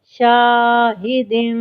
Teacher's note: شین الف زبر شا، حاضر ہی، شاہی، دال دو زیر دم، شاہدم، الف سے پہلے چونکہ شین پہ زبر ہے اس لیے الف مدہ کیا اور ہا کو سینے سے ادا کیا، اور دال کے نیچے تنوین ہے تو اس کو ہم نے غنہ کیا اور روکیں گے۔